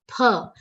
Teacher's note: Va has a prominent agat of ka. Visarga's pronunciation like pha and not fa. Not father's fa. Pha. It's a labial sound.